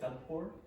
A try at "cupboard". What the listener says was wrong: No, cupboard. The P is not pronounced, okay? So you say cupboard, cupboard. You don't pronounce the P, okay? Cupboard.